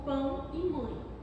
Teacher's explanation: nasais, quando o ar também sai pelo nariz, como em pão e mãe